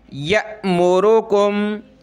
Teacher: حمزہ ساکنہ کو پڑھتے وقت جھٹکا دیا جاتا ہے، یعنی یأمرکم، یا حمزہ زبر یا، ٹھیک ہے۔